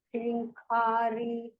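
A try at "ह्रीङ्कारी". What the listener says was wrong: Only thing is in the second line, first word, okay? Hrinkari. Dirgha is there.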